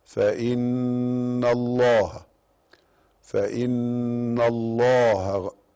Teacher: فإن الله أهو حرف غنة مشدد وهي النون